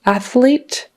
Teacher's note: when there's an L after it that can be tricky cuz your tongue has to go out and then back up behind your teeth for the L